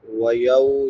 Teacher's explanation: واو ساکن ما قبل فتحہ یعنی زبر ہے تو اس کو نرمی سے پڑھیں گے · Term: واو لین